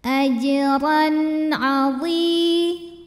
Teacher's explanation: Ada hukum izhar halqi sebab ada tanwin fathah menghadapi huruf halqi atau huruf tenggorokan yaitu ain. Maka tanwin dibaca jelas, n bunyinya